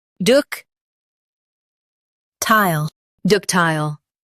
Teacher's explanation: Emphasize duc and make tile smooth. The T is clear.